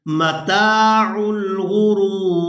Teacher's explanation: وقف کی صورت میں را کو ساکن کر دیں گے. را کو واو ساکن اور را ساکن کے ساتھ ملائیں گے.